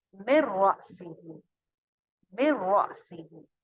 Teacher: نون کی آواز کہیں پہ بھی باقی نہیں رہی, مکمل ادغام ہوا بغیر غنہ کے